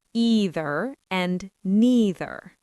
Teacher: in American English and Canadian English, the most common pronunciation uses the long e sound